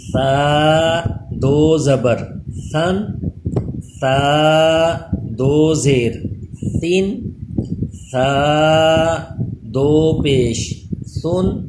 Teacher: ثا پہ بھی سیٹی پیدا نہ ہو، زبان اوپر کے دانتوں سے چپکا کے ہی پڑھیں